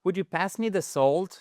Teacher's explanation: on ne prononce jamais le L dans would, could, OK? Et à chaque fois, c'est un ou court.